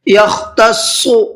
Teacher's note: خا کو حلق سے نکالنا ہے اور صاد کو منہ بھر کے پڑھنا ہے۔